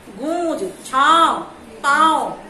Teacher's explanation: इसका उच्चारण नाक और गले दोनों से होता है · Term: अनुनासिक